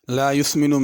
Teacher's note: لا یسمن میں سین ہے، اس کو ثا نہیں پڑھنا